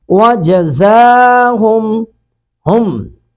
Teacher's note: وَجَزَاهُمْ ہم، اب یہاں پہ میم ساکن کے بعد با آ جائے تو اس کا قاعدہ یہ ہے کہ غنہ کرتے ہیں، ہونٹوں کو ملا کر یہاں پہ ناک میں آواز جائے گی، غنہ کریں گے